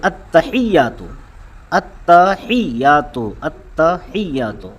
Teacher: یا جو ہے یہ مشدد ہے، اس پہ تشدید ہے، اور جس پہ تشدید ہوتی ہے، جو مشدد ہوتا ہے، اسے 2 مرتبہ پڑھا جاتا ہے، اس کی تلفظ کی ادائیگی ہوتی ہے۔